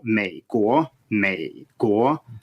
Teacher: it's supposed to be a low tone followed by a rising tone